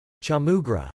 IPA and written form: tʃɔlˈmu grə (Chaulmoogra)